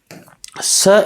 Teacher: स एक अघोष वर्ण है